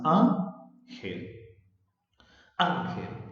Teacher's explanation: el acento está en la sílaba A. Quiere decir que el acento está en la penúltima sílaba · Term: grave o llana